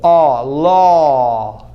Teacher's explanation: If you close your mouth, low, it sounds like oh, low, and that will be confusing.